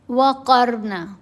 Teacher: قاف بھی موٹا پڑا گیا اور را کو بھی موٹا پڑیں گے. را ساکن ہے. را ساکن کے پڑھنے کے جو اصول ہیں وہ کیا ہیں کہ را ساکن سے پہلے والے حرف کے اوپر اگر زبر ہو یا پیش ہو تو را ساکن کو موٹا پڑھنا ہے.